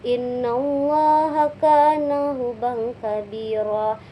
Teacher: huruf tanwinnya bertemu dengan kaf sehingga dibaca samar atau ikhfa